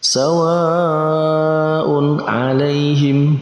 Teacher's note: Antara tanwin dan huruf ain kita baca dengan jelas. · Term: izhar